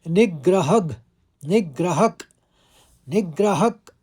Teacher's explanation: नी के ऊपर आघात है तो निग्रह पहले आप हल्का ग बोलेंगे फिर ग्रह बोलेंगे